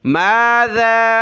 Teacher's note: ذال پر زبان نکالیں اور اس کو کھینچیں مد کی وجہ سے